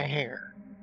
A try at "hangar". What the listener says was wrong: See, I know you're saying hanger. I know you're saying hanger, but it sounds like you're saying hair.